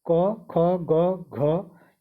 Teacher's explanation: क वर्ग के जितने भी वर्ण है उनका उच्चारण स्थान कंठ से होता है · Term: कंठ ध्वनि